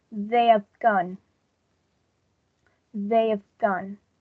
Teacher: the first H sound has been deleted completely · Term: reduction